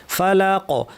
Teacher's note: ফালাক কফ ভারী এবং এখানে যেহেতু আমি সুকুন দিয়ে থামলাম কলকলা হবে।